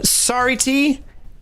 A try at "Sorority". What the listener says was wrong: You just said it like you were sounding it out, which you are. You just gotta say it faster than that.